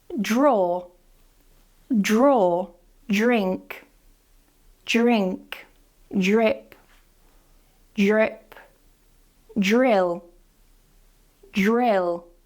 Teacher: You're pronouncing them at the same time, both that D and that R